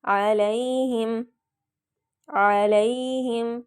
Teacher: ہوگا، علیہم، علیہم، عین واضح نکالیں گے، لام زبر یا لئی لمبا نہیں کرنا کیونکہ یہ یا لین ہے، حرف لین ہے